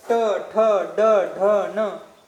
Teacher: मूर्धा आहे. म्हणजे ज्यावेळेस आपण ट, ठ, ड, ढ, न असं म्हणत असतो त्यावेळेस त्या मूर्धा जो अवयव आहे, मूर्धेला तिथं आपली जीभ लागत असते.